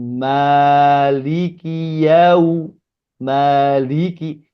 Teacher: Ma panjang enggak ke hidung